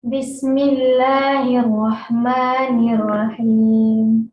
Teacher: Kemudian sifat ketebalan fathah tidak berubah menjadi o.